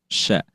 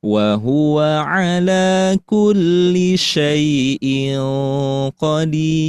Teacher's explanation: sya-nya sedikit tentunya ditebalkan atau ada sifat dari tafasyi, suara yang atau angin yang menyebar di dalam mulut